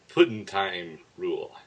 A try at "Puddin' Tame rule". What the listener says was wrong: No, seriously, that is tame, not time.